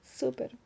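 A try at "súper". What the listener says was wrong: Of course, you have to roll the R at the end of super. You can't say super. Super.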